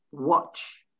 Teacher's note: The T slips in just before the CH